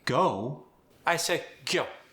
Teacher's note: O gets more of a rounding than an A.